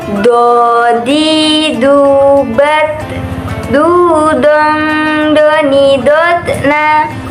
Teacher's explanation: Dalam melafalkan huruf do ini, kita harus mengucapkannya dengan menebalkan suara dengan mengangkat posisi pangkal lidah kita dan lidah bagian depan menutup bagian langit-langit.